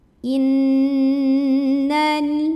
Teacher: Berikutnya di sini ada gunnah musyaddadah karena ada nun yang bertasydid, maka cara bacanya nunnya dengungkan, bunyi n-nya tahan kurang lebih dua harokat sampai ada getaran halus ke hidung.